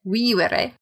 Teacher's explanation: the V's in vivere are pronounced as W. So there's two V's in vivere, and they both sound like W.